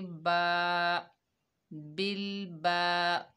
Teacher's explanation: ये अलिफ मद्दा है, एक अलिफ की मिकदार खींचकर पढ़ेंगे